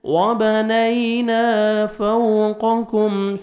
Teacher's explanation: واو لین ہے، نرمی سے ادا کریں گے، لپس پہ لپس کو راؤنڈ میں لے کے جائیں گے تاکہ واو اچھی طرح ادا ہو، قاف کو موٹا کر کے